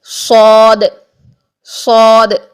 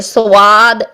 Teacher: اچھا، صاد کو ادا کرنے کے لیے آپ نے وہی موٹے حروف والی جو ڈائریکشنز ہیں، موٹے حروف والی جو چیزیں ہم نے نوٹ کی تھیں کہ کیا کرنا چاہیے کیا نہیں کرنا چاہیے، تو موٹے حروف کو جب بھی آپ ادا کرتے ہیں ایسا ہی صاد کے لیے بھی ہے کہ واو کی ساؤنڈ نہیں آنی چاہیے